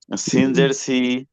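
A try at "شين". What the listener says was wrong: আচ্ছা, এই যে এটার উচ্চারণটা ভাই চিকন, সিন।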